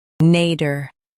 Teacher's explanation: Stress nay and keep der soft in US, dear in UK.